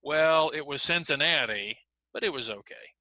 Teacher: I corrected the person by putting emphasis on Cincinnati. So notice Cincinnati is an important word, but it's not the last word of the sentence. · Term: changes in focus